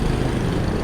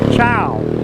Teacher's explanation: And when they're used together with the consonant in the middle, that makes an ow sound. It's like a short ow rather than the long ow that they use in rice. The consonant in the word is cho chang, which makes a ch sound, and it uses the first tone mark.